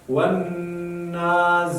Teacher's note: زا نو ویلو د لاندې غاښونه ادا کېږي